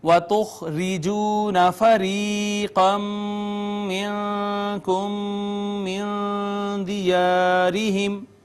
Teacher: را کے نیچے زیر. ہم نے باریک کر کے اس کو پڑھنا ہے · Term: مرقق